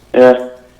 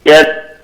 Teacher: when yeah is used to show that you're listening, there's less movement. It's more like that flat sound.